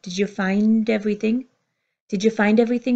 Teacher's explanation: the vowel at the beginning of everything pulls to a consonant so we don't hear did you find everything you hear did